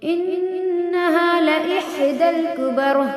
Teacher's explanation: انہا میں نون پہ تشدید ہے، غنہ ہوگا، یعنی ناک میں تھوڑی دیر آواز کو روکیں گے